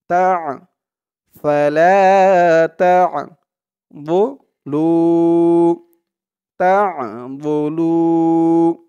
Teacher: আইনের উচ্চারণটা কিন্তু গলার ভিতর থেকে শক্ত করে আনতে হবে